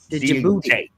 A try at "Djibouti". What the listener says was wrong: Djibouti. Yeah, D is silent. Djibouti.